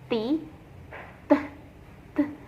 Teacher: When we pronounce T, t, t, the air passage is completely blocked by raising the soft palate and raising the tip of the tongue to touch the teeth ridge. The mouth with an explosive sound, there is no vibration, the vocal cord.